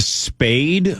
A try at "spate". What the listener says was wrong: Spate with a T, yeah.